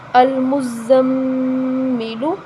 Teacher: میم تشدید والی ہے، میم پر تشدید ہے، میم مشدد ہے تو ہم اس پر غنہ کریں گے